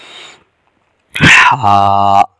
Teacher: گلے کے درمیان سے ادا کیا جائے گا اور آواز 1 الف سے زائد لمبا آواز کو نہ ہونے دیا جائے۔